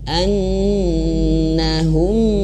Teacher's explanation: Masih ingat, ya, huruf nun itu harus ditahan kalau bertasydid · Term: nun yang bertasydid